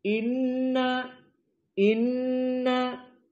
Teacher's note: hukumnya gunah wujubul gunah harus dibaca Dua harakat dan makhrajnya dari hidung khaisum Inna Inna ada suara yang bahasa Sundanya ngirung dari hidung in · Dan penitik beratan di sini pada ucapan inna, maka hukumnya gunnah, wujubul gunnah. Harus dibaca dua harokat dan makhrajnya dari hidung khaysum.